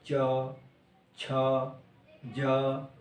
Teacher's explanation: च का उच्चारण करें तो जीभ तालु को जाके टच करती है